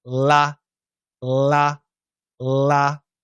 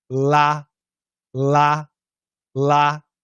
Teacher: one l is a dark l and you touch la la la and the other is a light l between the teeth